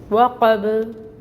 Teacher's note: با کو ساکن کر دیں گے اور جب ساکن ہوگا با تو یہاں پہ قلقلہ ہوگا